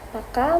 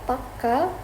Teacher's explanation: in Hindi Paka means right while Paka with the longer k means firm